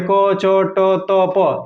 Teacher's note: ये तो ये जो है क, च, ट, त, प, ये अघोष अल्प प्राण है